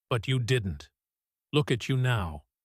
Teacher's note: Short sentences again and again that confident falling tone because she's stating something she clearly believes not asking or wondering. · Look at you now especially carries warmth through stress on you